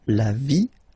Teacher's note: So basically you don't pronounce the E, okay? So it will be only the sound I, okay?